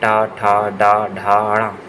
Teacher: तीसरा है ट वर्ग। ट, ठ, ड, ढ, ण। ये मूर्धा का स्पर्श करते हैं।